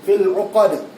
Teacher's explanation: Masih lagi sama qalqalah kubra, adanya pantulan yang cukup jelas.